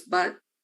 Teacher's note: this is back, mid-back, but at times mid-central, so it's like on the line there.